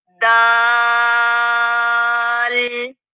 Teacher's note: زبان کی نوک اوپر والے دانتوں کی جڑوں کو لگے گی تو دال ادا ہوگا. تا کا اور دال کا مخرج سیم ہے، ایک جیسا مخرج ہے.